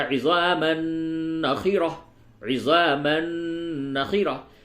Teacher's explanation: کیونکہ تنوین کے بعد یا نون ساکن کے بعد یرملون، یا را میم لام واو نون میں سے کوئی حرف آئے تو ادغام ہوتا ہے، اور نون میں ادغام مع الغنہ ہوتا ہے